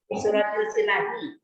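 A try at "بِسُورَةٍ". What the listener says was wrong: Bisuratis. Jangan til ya. Bisuratis sot perginya. Kalau komariah ada lamnya. Iya, huruf matahari. Jadi huruf itu ada huruf matahari, ada huruf bulan. Nah, kalau huruf matahari berarti panas dong. Kalau huruf bulan sejuk. Kalau huruf bulan itu maka keluar lamnya. Kalau matahari melebur dia.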